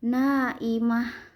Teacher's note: ta mabruto ketika berhenti jadi ha sukun